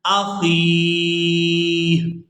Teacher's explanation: خا کو یاء مدہ اور ہا ساکن کے ساتھ ادا کریں گے